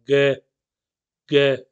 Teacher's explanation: आपकी जीभ के पीछे का हिस्सा है ना, वो ऊपर जाएगा। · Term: वेलर